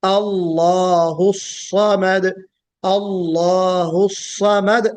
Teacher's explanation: और फिर ये जो स्वाद है, हमें इसको भी सही तरीके से मोटा करके पढ़ना है। सीटी हल्की बजेगी, सफीर की सिफत कम होगी और बोल्डनेस जो है वो ज्यादा होगा इसमें